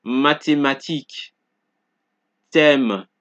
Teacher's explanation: So in each word, you're only hearing the T being pronounced. You don't hear the sound of the H.